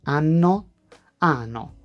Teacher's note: A double consonant is not louder, it is longer. You hold it for a tiny moment. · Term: double consonants